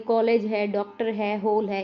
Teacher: यह ध्वनि अ और ओ के बीच होती है। इसका प्रयोग अंग्रेजी के शब्दों के लिए करते हैं। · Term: आगत स्वर